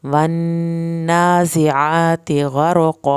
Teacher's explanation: यहाँ पे रॉ पुर किया जाएगा। कॉफ को मोटा करके पढ़ा जाएगा।